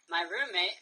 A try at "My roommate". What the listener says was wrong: Ooh, vowels. Extend your vowel sounds.